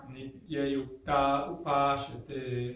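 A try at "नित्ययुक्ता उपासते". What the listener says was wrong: Nityayukta upasate. So, just one thing, upasate, not sha. Upasate, upasate.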